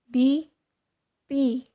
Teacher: For the consonant of B and P, the soft palate is raised. They are produced at the oral cavity only and so are defined as being oral.